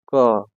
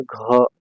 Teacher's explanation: क देखिए कोई कंपन नहीं हो रहा है घ को बोलिए घ देखिए कंपन हो रहा है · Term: अघोष